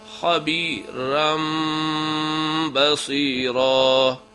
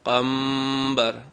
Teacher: آواز کو میم میں تبدیل بھی کرنا ہے اور غنہ بھی کرنا ہے، جیسے خبیرم بصیرہ، میم بعض غنہ بھی کرنا ہے، آواز کو میم میں بھی تبدیل کرنا ہے، میم بعض، من بعض کو میم پڑھتا ہے، نون کی آواز کو میم پڑھنا ہے۔